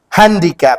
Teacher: hand is the syllable that is stressed upon, but still the last consonant is doubled.